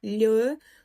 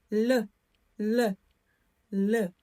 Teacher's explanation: Коли ми вимовляємо цю польську ль, язик займає проміжну позицію між зубами і піднебінням, тобто торкається зверху до ясен. Над зубами л.